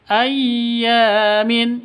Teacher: Ya panjang dua ketukan. Karena ada alif diawali dengan fathah mad asli atau mad thai.